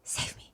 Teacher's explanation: it sounds like a very breathy, low, save me. You can barely hear him.